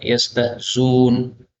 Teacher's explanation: boleh dibaca yastahzun, dan ini lebih mudah karena melenyapkan hamzahnya